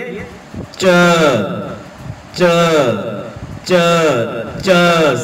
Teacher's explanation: जीभ पूरी पूरी तालु के चिपकती है और बीच में से आवाज थोड़ी सी संपीड़ित होकर के बाहर निकलती है